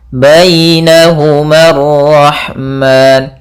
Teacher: ada ya sukun yang didahului dengan fathah. Ini bacaan lin, yang dimana dalam pelafalan ya-nya harus lembut.